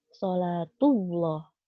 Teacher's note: bibirnya itu ada di majukan dikeluarkan sholatulloh dibulatkan dan ditebalkan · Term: lafadz jalalah